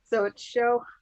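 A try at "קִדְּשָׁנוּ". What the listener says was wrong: all, it's cod. cod. No, there's no O. Cod, shift, Cod, shecha. See here, it's this letter here, which is ha at the, so you have Baruch, and it'll be the letter here. In this case, it's cod, shecha.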